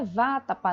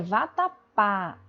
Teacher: E não é vátapa, né? É vatapá, é oxítona, tá certo?